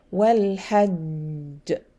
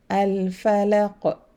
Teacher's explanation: Because I have a shadda, I have to hold the letter first before releasing it. So I have to take time in releasing the letter.